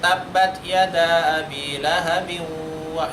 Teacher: Di sana juga gak ada tasdidnya wawnya. Di sana tanwin ketemu dengan waw, itu idgham bi gunnah.